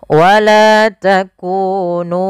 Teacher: mim mati bertemu dengan wau yaitu izhar syafawi yang di mana harus dibaca dengan jelas suara mimnya dan tidak boleh ditahan